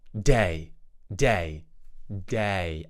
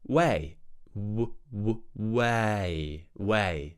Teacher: we're just changing the D sound in the previous word to a w sound so instead of day we're going to say way ww way